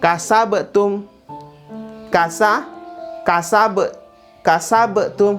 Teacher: Kasabtum. Nah, be-nya itu kolkola, pantulan.